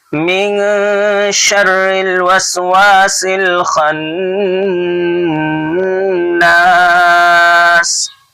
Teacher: شرل کی را باریک ہے، اس کو پور نہیں کریں گے، اس کو موٹا نہیں کریں گے کیونکہ را مشدد کے نیچے زیر ہے.